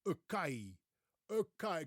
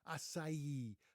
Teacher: with the stress on the last syllable